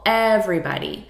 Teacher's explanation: look at the syllable stress here, everybody. So we're stressing the first syllable